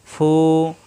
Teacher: উপরে দুই দাতের আগা নিচে ঠোটের পেটে লাগবে